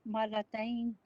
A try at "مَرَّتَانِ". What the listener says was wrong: مرتين مرة یہاں تشدید ہے، یہاں تشدید ہے مرتان مرتين نہیں صحیح لفظ سنیے مرتان